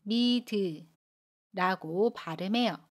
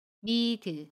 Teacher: 받침 디귿 뒤에 모음이 오면 받침 디귿을 이응 자리로 이동해서 미드라고 발음합니다. 연음이에요.